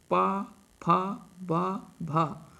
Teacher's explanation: प फ ब भ म सभी का उच्चारण कर करते हैं तो यह दोनों होठ आपस में जो है एक दूसरे से मिलते हैं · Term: ओष्ठ